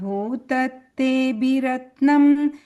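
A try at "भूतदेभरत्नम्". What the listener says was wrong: Again, you're saying that B there, it's Bhutatebha Ratnam.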